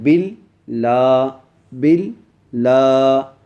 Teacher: لام کے اوپر تشدید آ گئی ہے اور کھڑی زبر آ گئی، کھڑی زبر آنے کی وجہ سے میں کھینچ کے پڑھ رہا ہوں